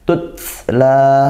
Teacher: tutla ada tak sukun ya, ditekan dan dihembuskan nafas setelah ditekan, kemudian desis ya